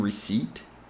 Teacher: there is no P sound in receipt the p is silent here